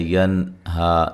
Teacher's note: نون ساکن کا یہاں اظہار ہے، غنہ نہیں کریں گے اس کو، یہ مد اصلی ہے.